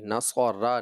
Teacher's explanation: آپ نے را کو باریک کر دیا